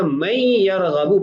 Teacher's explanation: اب دیکھیے یہاں نون ساکن ہے اور اگلے کلمہ کے اندر جو پہلا حرف ہے وہ یا ہے اور یا حروف یرملون میں سے ہے، تو ہم نے کہا کہ اگر یا ہوگی تو 2 نتیجے ظاہر ہوں گے۔ پہلا یہ کہ نون کو بھی یا کی جنس میں تبدیل کر کے ادغام کریں گے اور دوسرا غنہ بھی کریں گے